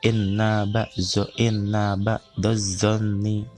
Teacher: Nah, itu inna ba'daz itu hukumnya adalah alif lam samsiah, karena setelah alif lam terdapat huruf samsiah yaitu zo, sehingga dibacanya itu melebur ke huruf setelah alif lam samsiah